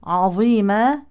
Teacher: الظاء من حروف التفخيم ووقفا مد عوض لكن نحافظ على ترقيق العين